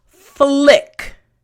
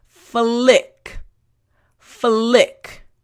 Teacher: Front teeth, bottom lip, and then immediately your tongue for the L sound needs to touch the roof of your mouth.